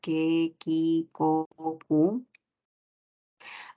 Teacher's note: También tenemos el fonema oclusivo, velar, sordo.